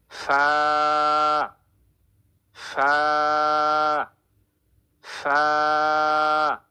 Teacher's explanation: 14 নম্বর মাখরাজ, নিচের ঠোঁটের পেট সামনের উপরে দুই দাঁতের আগার সঙ্গে লাগিয়ে একটি হরফ উচ্চারিত হবে, হরফটি হচ্ছে ফা। ফা বলার সময় অনেক বেশি বাতাস বের করতে হবে।